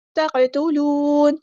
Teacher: قاف ساکن پر کلکلا ہوگا، ہیوی لیٹر ہے. واو مد آ گیا تو مد اصلی کریں گے.